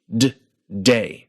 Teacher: in the English word, the very tip of your tongue hits your alveolar ridge, that ridge right behind your front upper teeth